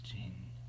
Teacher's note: It almost makes the E turn into an A sound, but it's very subtle.